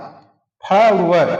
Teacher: दंत और ओठ से व का उच्चारण होता है, फ का भी होता है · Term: दंतोष्ठ